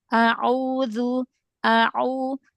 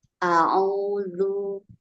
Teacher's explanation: Huruf ainnya tengah tenggorokan lagi.